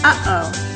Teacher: we pronounce that by briefly cutting the air when you speak kind of like in English when we say uh-oh you can hear the air stop between the two syllables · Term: glottal stop